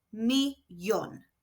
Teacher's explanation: Where Spanish words end in an N or S, the stress naturally falls on the second to last syllable. However, with millón, the stress needs to be on the last syllable. So this is shown with an accent.